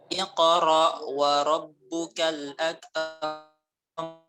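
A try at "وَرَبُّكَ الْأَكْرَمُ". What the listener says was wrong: Ditarik akram.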